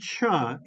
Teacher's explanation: it's a special combination of a plosive plus that immediately moves into a fricative so for example the sound cha as in cheese is actually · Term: affricate